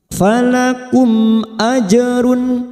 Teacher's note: falakum mim sukun bertemu hamzah, kita baca jelas idhar safawi